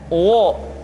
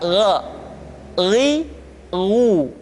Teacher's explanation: Perhatikan posisi mulut kita ketika mengucapkan dalam keadaan fathah, tidak dimonyongkan wo, tapi terbuka